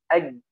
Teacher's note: Tidak mengeluarkan suara ay, tidak, atau juga tidak ya mengeluarkan napas ay, tidak, dia mati, ya. Ja ini memiliki sifat yang pertama adalah jahr, napasnya tidak mengalir